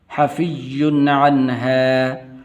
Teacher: یہاں پر غنہ نہیں کرنا کیونکہ آگے عین حروف حلقی میں سے